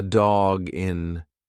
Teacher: you've put the G in front of the next word it's one sound